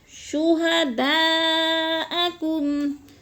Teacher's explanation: شہداء میں مد متصل ہے، لمبا کرنا ہے ہم نے 4 الف کے برابر